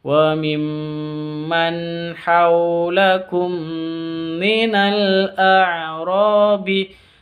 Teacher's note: mim sukun bertemu dengan mim dengung, cara bacanya dibaca dengung karena idgham mimi. Minal a'rabi, ada alif lam tandanya sukun al-qamariyah.